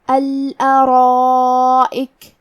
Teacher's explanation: تو ہم مد الف کو بھی بھاری آواز میں ادا کریں گے. کیونکہ یہ مد واجب متصل ہے لہذا ہمیں اپنی آواز 4 مد کے برابر لمبی کرنا ہے.